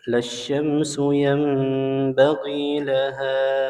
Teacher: huruf ha-nya dipanjangkan 4 sampai 5 harokat. Hukumnya mad jaiz munfasil.